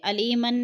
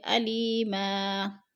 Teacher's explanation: علیما، ما جو ہے دو زبر تنوین، وقف کی صورت میں ہم ایک زبر میں بدل کر پڑھیں گے، علیمن نہیں پڑھیں گے بلکہ علیما۔